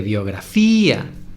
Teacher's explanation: la I es la sílaba tónica, la sílaba más fuerte.